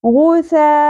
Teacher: اس حرف مدہ کے بعد سبب مدہ حمزہ اسی کلمہ اسی لفظ کے اندر آ گیا، اس لیے یہاں پر مد متصل ہو گیا اور اس کو 5 الف کے برابر کھینچتے ہیں. غثاء، حمزہ کے اوپر 2 زبر تنوین ہے، ان، اور یہاں پر اظہار ہوگا یعنی ان کی آواز آپ نے کلیئر کر کے پڑھنی ہے.